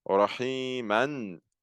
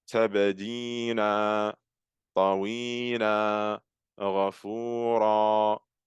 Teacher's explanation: you replace the tanween fatha at the end of a word with an alif med when you're stopping on that word. So for example, rahiman becomes rahima. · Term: med al-iwad